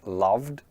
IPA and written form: lʌvd (love)